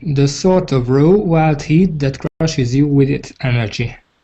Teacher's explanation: go up a bit on Raw